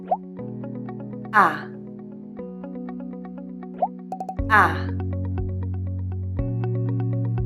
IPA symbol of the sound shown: æ